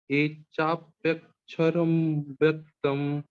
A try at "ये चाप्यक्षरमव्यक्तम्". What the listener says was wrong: देखो त म नहीं है ना, न है, हलंत न।